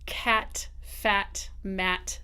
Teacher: very wide, very bright, very forward